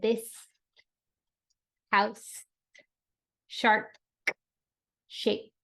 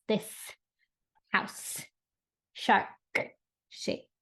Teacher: not only did I hold out the consonants I also added some pops for the consonants